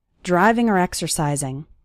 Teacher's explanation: often when the word or is between two more important words it sounds like R